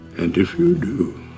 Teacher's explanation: Você não vê D na pronúncia.